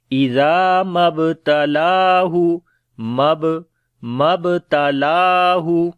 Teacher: لام کو بھی باریک پڑھیں گے، لمبا بھی کریں گے، کھڑی زبر ہے اس کے اوپر · میم کو جب با کے ساتھ ملائیں گے تو با کے اوپر قلقلہ ہوگا، کمزور قلقلہ ہوگا